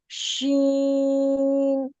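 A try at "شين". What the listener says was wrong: जी, बिल्कुल सही।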